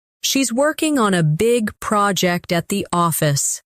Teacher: Stress, working, big, project, and office.